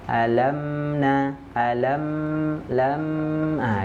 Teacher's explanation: mim sukun Enggak boleh terpantul kenapa karena dia punya sifat bainiah mengalir sedikit alamna alam lam ah dialirkan di situ tidak boleh dilepas jangan